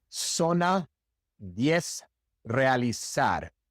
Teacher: in the great majority of the Spanish-speaking world, the Z is pronounced exactly like the S.